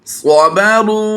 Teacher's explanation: वाव साकिन से पहले हरफ रा पर पेश है, रा वाव पेश रू हमने लंबा कर दिया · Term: वाव मद्दा